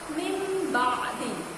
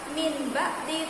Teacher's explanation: nun sukun bertemu dengan huruf ba, maka bukan min ba'di tapi mim ba'di, ya, berubah atau berganti dengan huruf.